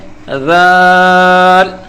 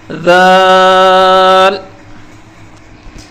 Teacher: زبان کی نوک دانتوں کے کنارے پر رکھ کر نرمی سے پڑھنا ہے، سیٹی بالکل نہیں بجانی۔